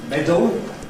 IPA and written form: ˈmedəl (medal)